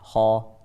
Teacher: خيرا أيضا مفخم. أيوة، على مراتب التفخيم لأنها مفتوحة